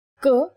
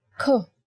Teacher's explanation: In Hindi, when you say K, there is no forceful expulsion of air. But when you say K, you will feel yourself expelling the air from your mouth.